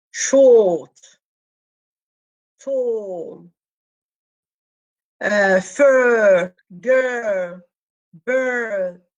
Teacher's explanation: the r is dropped and it's replaced by long vowel. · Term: lengthening